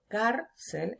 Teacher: Vemos cel, última sílaba, car, penúltima sílaba. Yo pronuncio cárcel, entonces es palabra llana.